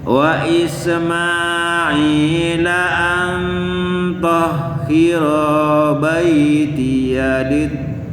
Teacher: ingat-ingat nun ketemu to itu ikhfa, tadi tahan 2 harokat. Nunnya condong ke to bunyinya.